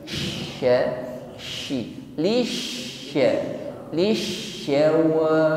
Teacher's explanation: huruf shin tasydid, di sini lebih tampak sifatnya tafasyi, yaitu menyebarnya udara di dalam mulut, bukan sekedar lisawa, bukan sawa, tetapi lebih besar tekanan udaranya, lebih meluas di dalam mulut kita, bukan sasi tetapi sya, shi, lisya, lisyawa.